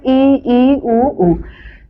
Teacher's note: जिनमें मुख वृत्त के समान बंद सा रहता है अर्थात सबसे कम खुलता है उन्हें संवृत स्वर बोलते हैं